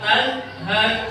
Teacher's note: Selanjutnya tidak boleh dibaca menengum karena apa? Apabila ada nun sukun, nun sukun atau nun mati bertemu dengan huruf ha, maka harus dibaca izhar